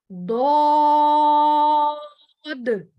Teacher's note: जबान के किनारे जब ऊपर वाली दाढ़ों के मसूड़े से टकराएगा तो ये हर्फ मोटा अदा किया जाएगा, ठीक है, इसको मोटा अदा करना है क्योंकि ये मोटे हरूफ में से है।